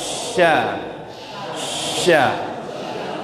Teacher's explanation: Antara permukaan lidah dengan langit-langit itu menyempit tapi nggak nempel. Sya, sya. Maka bunyinya yang keluar adalah tajam. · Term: huruf sya